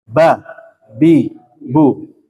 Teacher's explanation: merapatnya bibir atas dan bibir bawah tidak ada gunah tidak ada dengung ba bi bu dan juga enggak usah takaluf ggak usah kayak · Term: huruf ba